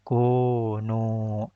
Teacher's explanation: Nu-nya panjang, dua harokat. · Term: mad tabi'i